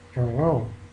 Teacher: Muy aproximante, muy relajado todo